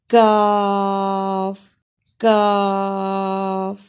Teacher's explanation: जबान की जड़ बिल मुकाबिल ऊपर के तालू से टक्कर खाए तो क अदा होता है